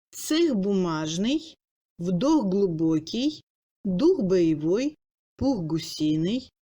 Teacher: Dans la chaîne parlée, les Kha en position finale d'un mot devant l'initiale sonore du mot suivant, prononcé sans pause, s'assimile. Kha plus consonne sonore devient G.